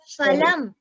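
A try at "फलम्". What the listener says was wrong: Here again, it is not phalam, it is ha. You should pronounce the pa with the hakara distinctly. Ha.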